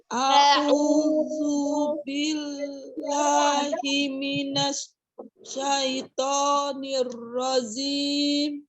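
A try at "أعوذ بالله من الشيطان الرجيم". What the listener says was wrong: Ya, minasnya tidak boleh terjeda karena nanti setelah kita pelajari huruf sin itu ada sifatnya tafasi ya, menyebar. Minasya.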